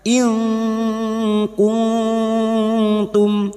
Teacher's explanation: nun sukun bertemu ta ikfa hakiki kita samarkan bunyi nun sukun dan mendengung selama 3 harokat